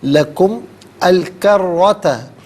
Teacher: لکم میں میم پر پیش ہوگا، اسے الکروتا کے لام ساکن کے ساتھ ملائیں گے، درمیان میں سے الف یعنی حمزہ کو حذف کریں گے۔